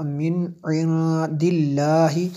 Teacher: آگے نون ساکن ہے، نون ساکن کی وجہ سے جو ہے ہم نے یہاں پہ نون ساکن کے بعد دال حروف اخفا میں سے ہے، اس لیے یہاں پہ ہم نے جو ہے غنہ کیا